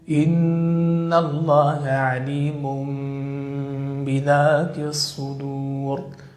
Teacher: عليم بذاته عليم بذاته كما تلاحظون تنوين بعده حرف الباء وعليه فتقلب النون الساكنة والتنوين ميمًا مخفاة بغنة مقدارها حركتين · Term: القلب